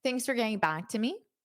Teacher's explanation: Notice how this for becomes more of a fur in unstress.